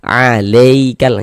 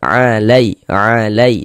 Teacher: Maka huruf ya sukunnya adalah harf lin. Maka kita baca lunak lembut saja. Alaikal e jangan sampai condong ke huruf E ya.